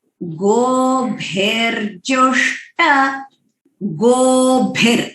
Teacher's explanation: गोभिर भ महाप्राण है और ह्रस्व मात्र है